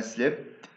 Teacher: slipped unreleased، يعني انت وقفت على التاء، فهو نفس الصوت تاء تاء تاء، لكن ننطقه بطرق مختلفة، احيانا بكون بطلع مع هواء، احيانا بكون بدون هواء، احيانا يتوقف. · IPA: /t/